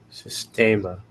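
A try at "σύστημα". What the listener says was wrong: systema. Good.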